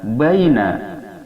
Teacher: ba, makharijul hurufnya berada pada kedua bibir yang disentuhkan